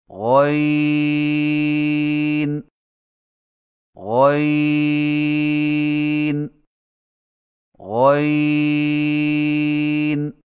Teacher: غین کی ادائیگی میں زبان کی جڑ کو تالو کی طرف بلند کرتے ہوئے موٹی آواز میں پڑھیں، یعنی غین غین غین.